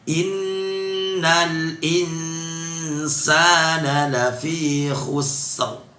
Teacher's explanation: nun tasydid dibaca dengung yang lama